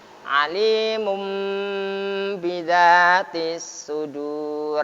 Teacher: Makhraj ba tersebut berganti dengan mim, suara mim. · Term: iklab